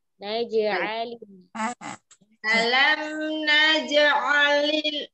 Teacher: Ainnya tekan lagi Om, tekan tengah tenggorokan ya.